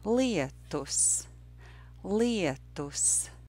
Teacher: toughs it is a two syllable word Leah dose Leah dose in the first syllable of this word there's the difficult diphthong iya